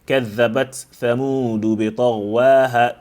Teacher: We have a silent ta followed by an active tha. There is no idgham here, so do not say كذبت ثمود in the riwayah of Hafs.